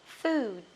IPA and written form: fu:d (food)